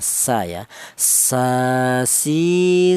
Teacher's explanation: huruf berasal dari ujung lidah menyentuh pangkal gigi seri bawah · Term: huruf sin